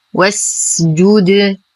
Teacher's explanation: اصبر على السين فهي من حروف الرخاوة